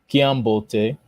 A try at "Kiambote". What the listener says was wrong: Oh, well done. Just keep that format. I mean the tonality.